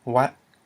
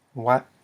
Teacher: it's a mid-tone because you have a low consonant followed by a short vowel and a dead consonant, a dead syllable, which equals a mid-tone.